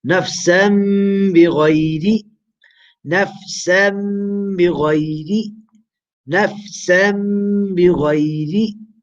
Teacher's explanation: Next example, we have a tanween and the yata after it is abba. So we do iqlab of the tanween into meme and we do gunna and ikhfa.